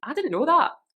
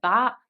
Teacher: the ah would get elongated a little bit, that, and you might rise up a little bit.